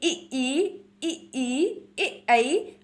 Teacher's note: जब आप बोलेंगे तो आपकी जीभ आगे की ओर बढ़ेगी। ई, ऐ आपकी अग्रभाग का प्रयोग सर्वाधिक हो रहा है। · आगे के ओर के भाग का प्रयोग कर कर बोले जाने वाले आपके स्वर हैं इ, ई, ऐ। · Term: अग्र स्वर